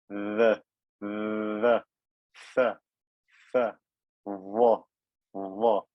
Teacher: The letters Dha, Dhal, and Tha come from the top teeth as well, but from the edge of them. The tip of my tongue touches the edge of my top teeth.